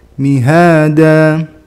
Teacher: Da sama ha itu panjangnya sama, 2 harokat. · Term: Mad iwad